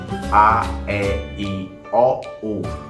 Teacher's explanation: continua saindo som apenas pela boca e o nariz não vibrou